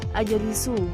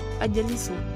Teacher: Kata ajalisu, saya sedang duduk, diucapkan dengan memanjangkan huruf akhirnya yang menjadi ajalisu. Seharusnya diucapkan pendek